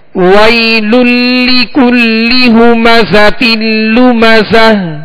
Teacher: جی ہاں، یا ساکن سے پہلے وہ پر زبر ہے، یا ساکن سے پہلے والے حرف پر زبر ہے. یہاں یا لین ہوگی، اس کو نرمی کے ساتھ بغیر کھینچے، بغیر جھٹکا دیے معروف طریقے سے ادا کریں گے